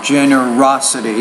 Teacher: put stress on that third syllable